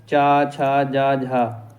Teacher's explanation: स्पर्श संघर्षी दोस्तों, जो तालब्य की जो ध्वनियाँ होती हैं वो स्पर्श संघर्षी कहलाती हैं।